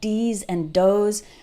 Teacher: pronounce these and those with a D sound like DS and doze or pronounces think like sink